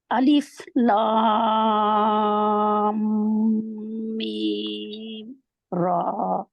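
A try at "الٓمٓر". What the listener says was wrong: मीम के ऊपर भी टाइम दें बाद में भी। अलिफ लाम मीम रा। मीम भी लंबा होगा।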